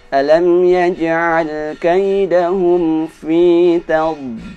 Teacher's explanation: Yang pertama huruf dad. Huruf dad ketika mati dia ditahan dengan kuat.